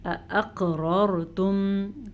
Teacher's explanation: قاف کے اوپر جھٹکا ہو رہا ہے کیونکہ قاف پہ ساکن ہے. دونوں را پر پڑھی جائیں گی.